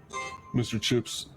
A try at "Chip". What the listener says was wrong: It's Chips, sir. No chips. No S, sir. Chip.